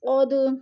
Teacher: قد پہ قلقلہ ہو رہا ہے، دال ساکن حروف قلقلہ میں سے ہے تو دال کو ہم نے ہلا کر پڑھنا ہے